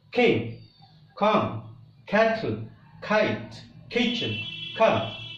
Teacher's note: the air is stopped behind the back of the tongue and soft pallet and when we release all of a sudden the air we